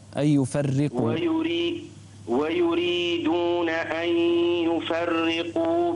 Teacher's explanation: انتبه الى الراء لا تفخم الراء